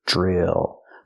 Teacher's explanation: DR makes the j sound like juice, plus the r sound